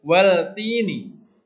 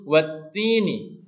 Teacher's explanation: Setelah huruf waw ada alif, kemudian ada lam. Tapi kemudian lamnya itu tidak dibaca. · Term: idgham syamsiyah